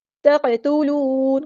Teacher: قاف ساکن ہے تو یہاں پہ قلقلہ ہوگا، ہم ہلائیں گے آواز کو. اور واو مدہ آ گئی ہے اور نون کو ہم ساکن کر دیں گے وقف کرتے ہوئے، اور مد عارض بھی ہوگی یہاں پر.